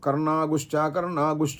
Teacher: ఈ అనుస్వారాన్ని గకారంతో కూడినట్లుగా ఉచ్చరించాల్సి ఉంటుంది అప్పుడు మనం అప్పుడు మనం కర్ణాగు కర్ణాగు అని అంటూ గకారంతో కూడినటువంటి అనుస్వారను